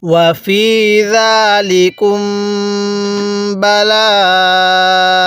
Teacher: মিম সাকিনের পরে যদি বা থাকে তাহলে ওই মিম সাকিনটা আমাদের গুনাহ করে পড়তে হবে। তাহলে এখানে মিম সাকিনের পরে বা আছে, এজন্য আমরা মিম সাকিনটি গুনাহ করে পড়ছি।